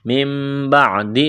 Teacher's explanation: یہاں نون ساکن کے بعد با ہے، اقلاب کریں گے، یعنی اس نون کو میم سے تبدیل کرنا ہے